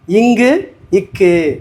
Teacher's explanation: இங்கு இக்கு அப்படிங்கிறது நாவின் முதல் அன்னத்தை அடியில் தொடுவது